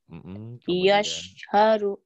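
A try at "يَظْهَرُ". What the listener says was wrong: Jangan ke se, ke es, ke zo. Ya. Yauzharu. Yauzharu. Yauzharu. Jangan yas. Yauzo. Yauzharu. Zo. Ya, zo. Jangan ke S.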